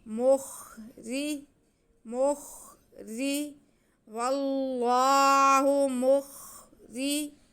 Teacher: اگر را ہے، را کے نیچے زیر ہے، را باریک پڑا جائے گا. مخری، مخری، واللہ مخری.